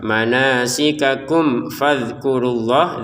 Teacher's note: Kalau mim sukun bertemu fa ini dengan jelas ya. Manasikakum fadkurullah dalnya jangan dipantulkan.